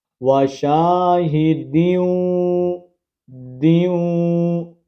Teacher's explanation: تنوین کے بعد حرف واو آ گیا ہے، تو یہاں پر ادغام ہوگا، یعنی اس تنوین کو اس کے ساتھ واو کے ساتھ کنیکٹ کریں گے اور ساتھ غنہ کریں گے۔